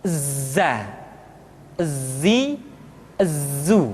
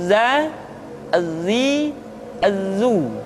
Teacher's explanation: dalam huruf latin tetapi ingat huruf dza bersifat Al Jabbar artinya ketika kita mengucapkan huruf dza suara kita mengalir akan tetapi nafas tidak boleh mengalir